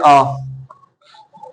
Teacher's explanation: पूरा मुंह खुलता है। जैसे आ विव्रत है भाई पूरा मुंह खुलेगा उच्चारण करने में। जैसे आ पूरा मुंह खुल जाएगा।